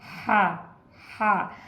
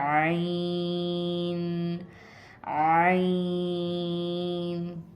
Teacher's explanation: जब हा पढ़ रहे थे हम तो हवा को बाहर निकाल रहे थे, हा। आइन के लिए हम जो है वो दबा के पढ़ेंगे मगर हवा बाहर नहीं निकालेंगे